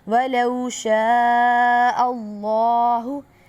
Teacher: اب شین جو ہے وہ سیٹی والے حروف میں سے ہے، سیٹی کی آواز آئے گی آپ کو باقاعدہ۔